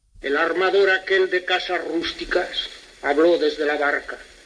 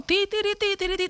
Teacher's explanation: quienes hablaban se mantenían en una nota, o sea, cogían una cadencia y no la soltaban, subían y bajaban desde esa cadencia, ¿no? Ti ti tiri ti y se quedaban ahí arriba. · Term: entonación antigua